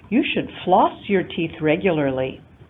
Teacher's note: This is a statement using rising, falling intonation, and you see that the rise in pitch occurs over our prominent element, floss.